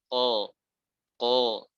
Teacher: Ya, walaupun sangat kecil sekali, sangat tipis. Ketika antum mengucapkan huruf qol, iya ada qalqalahnya, tapi tipis sekali.